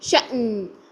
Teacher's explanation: نون کی آواز کو ہلانا نہیں ہے اور حمزہ کی آواز کو بھی جھٹکے سے بند کرنا ہے